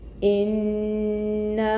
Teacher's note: حمزہ کے نیچے ہے کسرہ یعنی کہ زیر، 1 کاؤنٹ اس کو پڑھیں گے، 1 حرکت ہے، لیکن آپ نے دھیان رکھنا ہے کہ حمزہ کو محقق ادا کرنا ہے، ای ساؤنڈ آئے گی